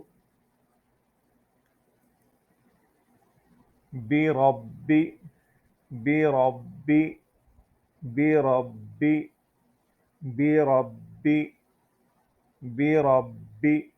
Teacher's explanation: یہ را کو ہم نے موٹا کر کے پڑھنا ہے، پر کر کے پڑھنا ہے۔ اس کی آواز تھوڑی سی عام را کے بجائے موٹی آواز اس کی جو ہے ادا کی جائے گی۔